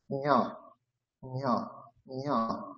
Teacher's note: যখনই ঞ উচ্চারণ করবেন তখন তালুতে জিহ্বা স্পর্শ করবে, আর শব্দ হচ্ছে নাসিকা থেকে উচ্চারণ হবে, নাক থেকে উচ্চারণ হবে ঞ ঞ ঞ। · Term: তালু নাসিকা